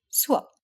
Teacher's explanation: Words like suop have two vowels when pronounced slowly and carefully, but can turn into diphthongs when pronounced quickly